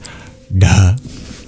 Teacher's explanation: You curl your tongue back and you add breath.